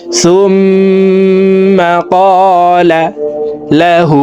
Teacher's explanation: সুম এখানে ওয়াজিব গুন্না, হরকতের বামে মিমের উপরে তাসদিদ আছে, এই কারণে পেশওয়ালা সাটি তাসদিদওয়ালা মিমের সাথে 3 সেকেন্ড পরিমাণ গুন্নাহ করে পড়ব।